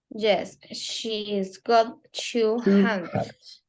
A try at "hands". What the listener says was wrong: Not hams, hands.